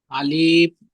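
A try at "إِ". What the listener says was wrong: জি, আলিফের উপরে যখন হারাকাত এসে গেছে তখন আলিফ বলবেন না, তখন হামজা বলবেন, হামজা জের ই।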